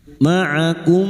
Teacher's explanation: Mim sukun bertemu mim idgam mimi memasukkan atau mentasditkan dua mim. Masuk pada huruf mim berikutnya disertai mendengung selama tiga harakat.